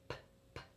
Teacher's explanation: And remember, when you're doing that sound, it's just P. The tiniest puff of air is coming through your lips.